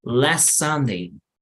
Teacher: Noten que también la T no suena. Las T's cuando están al final no tienden a tener un sonido fuerte.